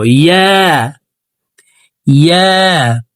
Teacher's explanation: ইয়া হরফের উচ্চারণ জিহ্বার মধ্যখান থেকে পড়তে হবে